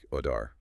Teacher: American English often sounds like odar, with that soft D or flap T sound